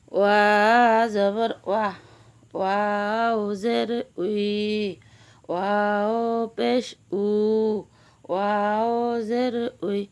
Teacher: ওয়াও দুই ঠোঁটের মাঝখানের ফাঁক থেকে আদায় হবে।